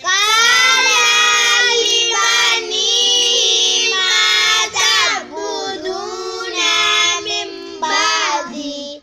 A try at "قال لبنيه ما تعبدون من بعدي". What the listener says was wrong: تعبدون نا کو لمبا نہیں کرنا.